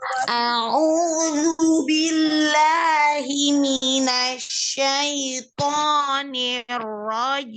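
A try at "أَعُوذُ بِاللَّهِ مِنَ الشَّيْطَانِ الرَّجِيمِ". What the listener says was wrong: Huruf to al-jauh jangan masuk ke hidung. Syaito, keluarkan. Syaito.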